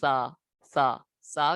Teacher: سا حروف لثویہ زبان کا سرا اور اوپر کے دانتوں کے اندرونی کنارے سے ادا ہوتے ہیں